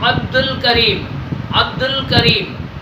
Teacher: دال کو لام کے ساتھ ملا رہے ہیں، لام کا آواز آ رہا ہے، عبد الکریم، عبد الکریم، دال الف اور لام کے بعد جو حرف آیا ہے وہ کاف آیا ہے، وہ کاف حروف قمری میں سے ہے، قمری میں سے ہے۔